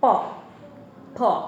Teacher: এক ঠোঁট আরেক ঠোঁটকে স্পর্শ করছে, অর্থাৎ বাতাসটাকে এভাবে বন্ধ করে দিয়েছে। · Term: ওষ্ঠধ্বনিও